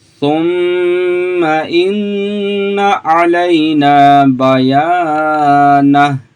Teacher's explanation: यहाँ पे मीम शद का गुन्ना, ठीक है। यहाँ पे हम नाक में आवाज़ ले जाके पढ़ेंगे। यहाँ पे भी नून मुशद्दद का गुन्ना है, यहाँ पे हम गुन्ना करके पढ़ेंगे।